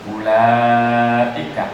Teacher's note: ada hamzah sebelumnya ada mad, itu dibaca panjang.